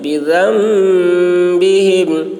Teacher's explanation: نون نہیں پڑھا جائے گا، ذال کو میم سے ملا کر پڑھیں گے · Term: غنہ